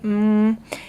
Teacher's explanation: let's look at em its anterior so it's in the front I make it with my lips right mmm its nasal I use my nasal cavity not my oral cavity if you go up and touch your nose you can feel